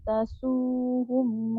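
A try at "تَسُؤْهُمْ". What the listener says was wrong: Tasuhum ada hamzah tu.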